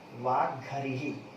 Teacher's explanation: तो घा का महाप्राण है और हा का भी महाप्राण है